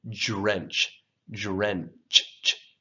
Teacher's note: So drench, j. The DR sounding almost like a J sound.